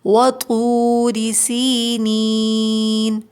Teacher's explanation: یا ساکن سے پہلے زیر ہے، یا مدہ ہے، 2 کاؤنٹس کھینچیں گے